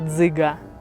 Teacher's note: у слові дзиґа перший звук чуємо ДЗ це твердий приголосний звук и голосний г твердий приголосний а голосний порахуємо Скільки букв у